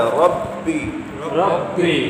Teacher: ربی با پر جماؤ سے قلقلہ ہے